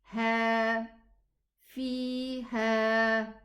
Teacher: 2 counts for the ya and 2 counts for the existence of the alif. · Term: elongated 2 counts